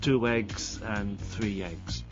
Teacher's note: the final vowel linking to the vowel beginning the next word